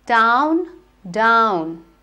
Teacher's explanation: when you say der it is a voiced sound so a lot of vibration